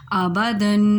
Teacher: اور دال پر دو زبر ہے یعنی تنوین ہے، تو تنوین پر ہم نے گنہ کیا کیونکہ تنوین کی جو ادائیگی ہے وہ گنے کے ساتھ ہی ہوتی ہے